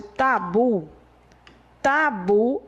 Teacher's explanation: Então, a sílaba forte de tabu é a última. Ela é oxítona, mas ela não é acentuada.